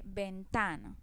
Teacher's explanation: Ventana, entonces ventana no lleva tilde por ninguna parte pero hace la mayor fuerza o tiene el acento en la sílaba ta, porque es la que pronuncio con más fuerza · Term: acento prosódico